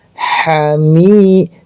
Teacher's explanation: Mnya panjang karena ada ya sukun mad thobi'i.